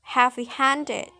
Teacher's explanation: the secondary stress is the first word and primary stress is on the second word hand · this has the pattern with primary stress on the second word and secondary stress is on the first word